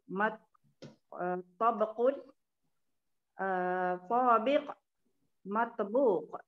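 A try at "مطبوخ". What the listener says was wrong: Matbuq. Panjang sikit. Matbuq.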